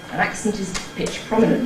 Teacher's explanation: You’ve got a high pitch on /æk/ and a low pitch on /pɪʧ/, and then a high one again on /prɒm/. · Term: pitch prominence